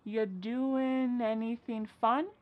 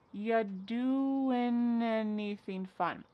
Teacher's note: We link together doing because we're going to drop the G. It ends with the sound n, the N sound.